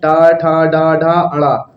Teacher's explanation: मूर्धन्य से उच्चारण होता है